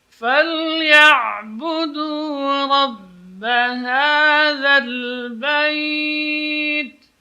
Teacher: Ha juga huruf tarqiq yang keluar dari pangkal tenggorokan. Hadza. Jadi jelas bunyinya, tidak tertahan.